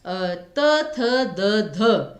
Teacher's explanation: इनको बोलने में तो आपने जीभ को पूरा पूरा ऊपर के दांतों से टच किया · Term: दंत्य